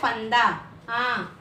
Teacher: अंग, ये इससे नाक से ध्वनि निकलती है, इसे अनुस्वार कहते हैं